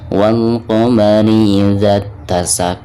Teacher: jadi dari bacaan za langsung ke ta ya, jadi alif lam tersebut tidak dianggap. Idza tasaq, ketika diwakafkan maka di sini ada pantulan huruf qaf ya, karena huruf qaf ini merupakan salah satu daripada huruf qalqalah dan cara membacanya itu harus ada pantulannya. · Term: alif lam syamsiyah